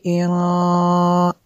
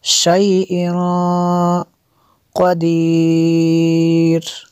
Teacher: تنوین کے بعد قاف ہے حروف اخفا میں سے، تو یہاں پہ اخفا ہوگا اس لیے غنہ کیا۔